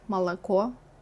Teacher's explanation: Now head south of Moscow to places like Tula, Ryazan, or Oryol, and things change. Here you will hear akanye, where unstressed o and ye turn into a.